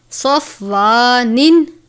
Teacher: صاد کو ہمیشہ پر پڑھتے ہیں کیونکہ صاد حروف مستعلیہ میں سے ہے